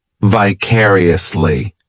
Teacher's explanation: The third syllable, it's like that letter I just has that E sound, and the fourth syllable has the schwa